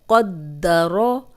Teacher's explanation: را پہ زبر ہے تو را کو بھی موٹا پڑھیں گے، کیونکہ را پہ زبر یا پیش ہو تو را موٹی پڑھی جاتی ہے۔